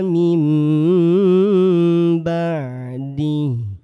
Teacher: nun sukun jumpa huruf ba, bacanya M